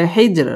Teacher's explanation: জিম কলকলার হরফ ধাক্কা দিয়ে পড়তে হবে